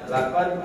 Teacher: Jadi dal ini satu dia ditekan, 2 napas berhenti, ya, jangan berhembus. 3 dia harus lidah ke bawah, pangkal lidah ke bawah, berarti istifal. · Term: qalqalah